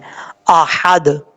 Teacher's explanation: حمزہ کے بعد ہا ہے, ہا بریک پڑھا جائے گا, اس کو بھاری ساؤنڈ کے ساتھ پڑھنے کی ضرورت نہیں ہے